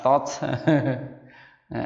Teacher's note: to itu termasuk huruf sifatnya adalah jahar, ya. Tidak mengeluarkan nafas